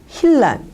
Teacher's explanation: 르하고 느가 만났을 때 르르로 변하게 됩니다. · 찰에다가 나가 있는데 이것들이 이제 만나게 되니까 찰나 이런 식으로 르르로 변하게 됩니다.